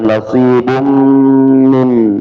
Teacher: nasibun tanwin bertemu dengan mim idghamunah ya, maka gunahnya dua harakat